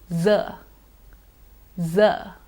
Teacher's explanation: It is a fricative, a friction sound, a continuous sound. If I start saying Z, I can carry on saying it as long as my breath lasts or until I stop the sound myself. · It's an alveolar sound. The tip of your tongue moves near your teeth ridge.